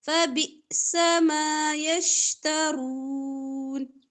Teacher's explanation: حمزہ پہ جزم جھٹکا